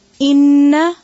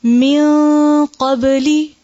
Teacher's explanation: ہم ناک میں آواز کو نون کی ٹھہرا رہے ہیں لیکن ظاہر نہیں کر رہے بلکہ چھپا رہے ہیں · غنہ ہوتا ہے چھپا ہوا. آواز کو ناک میں ٹھہراتے ہیں مگر ظاہر نہیں کرتے، چھپا کے ناک میں ٹھہراتے ہیں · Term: اخفاء